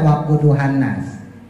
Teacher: itu n-nya ibu tahan sampai 4 sampai 5 juga nggak masalah